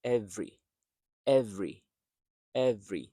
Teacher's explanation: So the first e is unstressed.